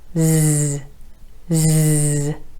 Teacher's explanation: your tongue tip is behind your top front teeth, pointed towards the alveolar ridge, or maybe just a little bit further back towards the roof of your mouth. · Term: Z sound